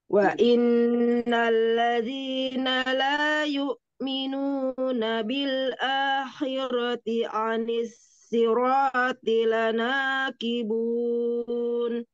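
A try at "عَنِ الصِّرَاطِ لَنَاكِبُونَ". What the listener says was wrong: Ini khoknya belum terdengar. Agak ngorok sedikit. La yu'minuna bil akhirati anis. Itu ada stop. jangan. Anis.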